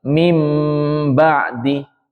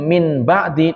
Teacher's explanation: Seperti itu namanya bacaan iqlab. Nunnya diubah menjadi huruf mim. Karena iqlab sendiri itu artinya adalah mengubah. · huruf nun menjadi huruf mim disertai dengan dengung sekadar dua ketukan